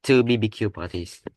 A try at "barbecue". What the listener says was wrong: Barbecue. In English, you pronounce it barbecue. Barbecue. Not BBQ. In English, you say barbecue. Barbecue.